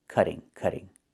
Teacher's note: in America, we change the T to a fast D when it's between vowels